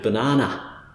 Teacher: in Australian English, just to make it a little bit more confusing, the schwa on the end of a word will often end up sounding quite a lot like ah